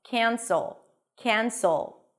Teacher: A s sound and a dark L.